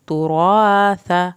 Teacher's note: آخر میں سا زبان کے نوک سے پڑھا جائے گا